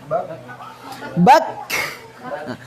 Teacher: Jadi nanti terhembus nafasnya setelah suara tertahan. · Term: hamas